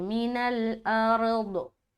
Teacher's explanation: तो दौत को मोटा करके रुकेंगे